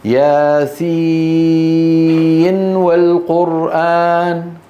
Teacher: يجب أن تظهر النون.